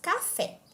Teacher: a sílaba fé é a mais forte e portanto é a sílaba tônica já a sílaba k é a sílaba mais suave e portanto